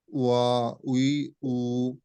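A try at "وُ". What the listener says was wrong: এই দেখেন উই উ, উই উই মানে কি? উ, এটাতে ঠোঁট থেকে আসে নাই। উ ঠোঁট থেকে আসে না, এটা হামজা থেকে আসছে।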